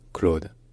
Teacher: It's like the English name Claude, but with a softer, more rounded O sound, almost like how a Swedish person would say it, Claude.